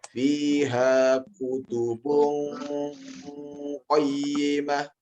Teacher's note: Menyamarkan bunyi. Jadi antara bunyi nun dengan bunyi huruf yang disamarkan itu 50-50. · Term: ikhfa